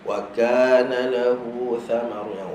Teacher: kaf dengan ta masa mati ada angin, tetapi masa dia berbaris tak ada angin.